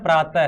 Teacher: विसर्ग में भी है की ध्वनि आती है, इसलिए विसर्ग का उच्चारण स्थान भी क्या होता है अपना? कंठ ही होता है